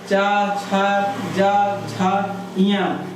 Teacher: व्यंजन में जो है च वर्ग च छ ज झ य ये जो है ताल वर्ग के अंतर्गत आते हैं